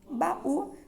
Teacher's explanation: Baú, separando silabicamente, eu tenho o U tônico, né? O U com som mais forte, e ele vai ficar sozinho na palavra. Se ele fica sozinho com o U tônico, eu tenho um hiato, portanto eu acentuo.